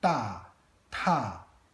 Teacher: we're not used to saying ta without any voicing here.